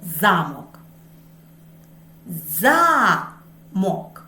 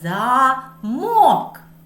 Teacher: у слові замок голосніше промовляється звук а який знаходиться у першому складі слова а у слові замок голосніше промовляється звук О він знаходиться у другому складі